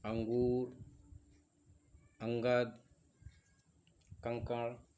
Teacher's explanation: इसके बाद अनुस्वार और विसर्ग को हम देखेंगे कि अनुस्वार क्या है और विसर्ग क्या है। यह स्वर के बाद और व्यंजन के पहले आता है, जिसकी ध्वनि केवल नाक से निकलती है